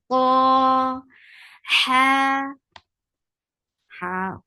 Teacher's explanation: ha with hams make two counts long from middle part of your throat.